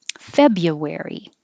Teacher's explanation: the br we just get rid of the r and make it easier